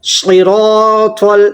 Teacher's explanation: صاد حروف مستعلیہ میں سے ہے, اس لیے ہمیں اسے پر پڑھنا ہے